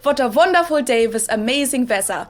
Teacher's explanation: use the German W sound which is the same as the English V sound